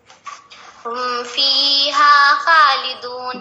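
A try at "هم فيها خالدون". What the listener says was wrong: جی اس بار کھینچنے کے اعتبار سے تو بالکل صحیح تھا, لیکن ادا کرنے کے لحاظ سے صحیح نہیں ادا ہوا تھا. فی ہاں نہیں, یہ ہم کئی بار بتا چکے ہیں. آپ لوگ رٹ لیں, صرف صاد ضاد طا ظا خا غین قاف ان حروف کو موٹا بنا کر ادا کریں گے. بقیہ جہاں پر بھی جو بھی حرف ہو اس کو نہیں موٹا بنائیں گے.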